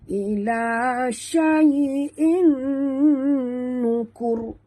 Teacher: kita kena masukkan sepenuhnya bunyi tanwin ke dalam nun disertai dengan dengung. Ya, idgham ma'al gunnah.